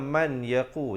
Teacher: bila nun mati bertemu ya, jangan lupa masuk beserta dengung 2 harakat, hukumnya idgham bi gunnah